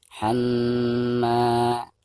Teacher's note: Baik, selanjutnya hammalatal hatab. Perhatikan dari huruf ha itu langsung ditasidkan ke ma disertai dengan gunah atau dengan dengung.